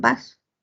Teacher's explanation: El oclusivo bilabial sonoro. Ese oclusivo sonoro, bilabial sonoro lo veo en beso, pero también lo veo en vaso